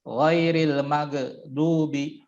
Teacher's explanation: ketika sukun harus dialirkan karena termasuk salah satu huruf yang rakhawah